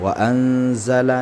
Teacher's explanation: nun mati bertemu dengan zai itu diikhfakan.